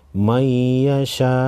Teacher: शीन अलिफ मद ज़बर शा हमज़ा पेश ओ मैयशा वक़फ़ की सूरत में हमज़ा साकिन पढ़ेंगे।